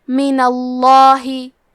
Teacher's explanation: تفخیم تو ہم حرف اللام کو موٹی آواز میں پڑھیں گے